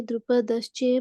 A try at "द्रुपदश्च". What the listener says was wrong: बच्चे चे नहीं, च।